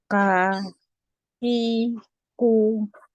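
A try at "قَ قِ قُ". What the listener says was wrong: Yeah, don't say ka, qa. stay on the makhraj. Stay on the makhraj. When you say it with kasra, you make it this kaf. No, stay on the same makhraj.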